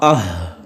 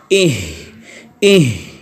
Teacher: اس میں بھی جو ہے وہ سانس جاری رہے گی، اہ اہ، اور آہستہ آہستہ آواز جو ہے وہ پستی کی طرف جاتے جاتے ختم ہو جائے گی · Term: صفت ہمس